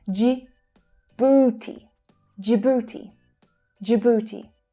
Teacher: That's the /dʒ/ as in 'jam' consonant sound. And the /uː/ as in 'food' vowel sound.